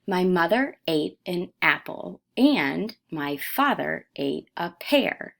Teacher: in mother the first syllable is stressed in apple the first syllable is stressed and father the first syllable is stressed